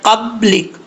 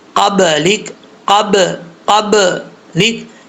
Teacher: یہاں پہ اگر آپ پڑھتے ہیں قبلک تو غلط ہے، ٹھیک ہے. یہ غلط ہے، آواز بند نہیں ہونی چاہیے، یہاں قلقلہ ہے